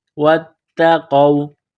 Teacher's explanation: قاف کو واو کے ساتھ ملانا ہے، قاف کو موٹا کرنا ہے